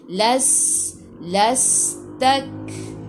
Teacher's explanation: Kaf, sifat huruf kaf, hamas, kena ada sedikit sahaja angin, jangan banyak.